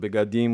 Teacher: you can say it beadim with the e being partially pronounced